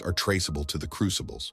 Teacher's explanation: the crucibles has such a breathy quality